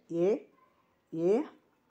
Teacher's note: ಕಂಠ ಮತ್ತು ನಾಲಿಗೆಯ ಅಂದ್ರೆ ದವಡೆಯ ಸಹಾಯದಿಂದ ಹುಟ್ಟಲ್ಪಡುವಂತಹ ಅಕ್ಷರಗಳನ್ನ ಕಂಠ ತಾಲವ್ಯ ಅಂತ ಕರೆಯಲಾಗುತ್ತದೆ